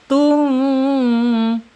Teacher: tum terkatup tapi dia udaranya tetap mengalir ya. Nah, itu bedanya. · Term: ikhfa syafawi